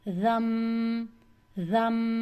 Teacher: رن نہیں پڑھنا بلکہ پڑھنا ہے رم، اور 2 کاؤنٹ کے ساتھ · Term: اقلاب